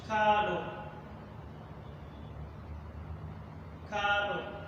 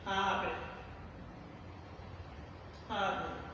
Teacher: So this change between ka to ha is what is called initial consonant alternation or initial consonant permutation.